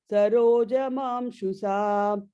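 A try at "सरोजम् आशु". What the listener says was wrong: The second line end, very end, Sarojam Ashu. I think you put an extra im in the Basuranana Sarojam Ashusa.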